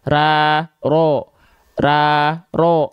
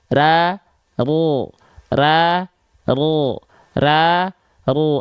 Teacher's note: dia vokalnya o pangkal lidahnya naik tapi lihat nampak depan bibir kita sama saja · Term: vokal o